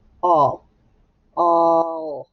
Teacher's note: Do we hear A? No, we hear short O. And we do hear the L, though. All. We hear the W.